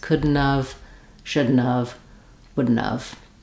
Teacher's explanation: notice how we drop the T and we link that all together, and we're also very short on the n of second and third syllables